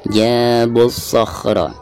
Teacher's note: Jabus sakhra alif lam syamsiyah karena tidak ada tanda sukun ya, dari bacaan bu langsung ke so